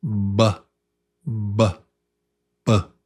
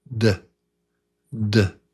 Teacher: One is lips. Buh. Buh. Buh. And the other is tongue on teeth.